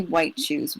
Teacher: the t and the shoe kind of go together so it kind of blurs one into the other